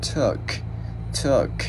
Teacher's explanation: Chữ này chữ U mình không có chu môi. Cái chữ T á, mình bật đầu lưỡi giữa hai răng á, mình gắn vào t, t, t.